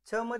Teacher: छ मध्ये ह येतय ना उच्चार करताना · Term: महाप्राण